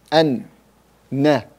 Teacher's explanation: the tip of the tongue hit the upper gum, the nun exits